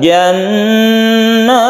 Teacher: Jannat tasydid nun disebut dengan gunnah musyaddadah, gunnah karena bertasydid, maka kita dengungkan jannat. Nat ini adalah mat tabi'i tapi bertemu dengan huruf yang disukun, maka kita sebut mat arid disukun kalau kita berhenti di sini.